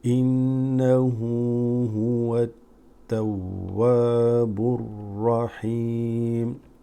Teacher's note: You're gonna go from the ba here straight to the ra. Alif lam drops. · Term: huruf shamsiyya